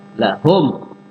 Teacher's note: lahum mim mati ketemu fa idhar. Ya, mimnya nggak boleh dibaca samar, harus jelas.